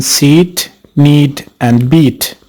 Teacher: as in seat knead and beat as shown in the figure this is a front closed vowel the lips are spread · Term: e sound